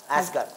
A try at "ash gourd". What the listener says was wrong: Not asgard. Ass is, the behind of yours is ass, and you can be a big ass too, but this is ashgard. Not asgard, ashgard. Ashgard. Ashgard.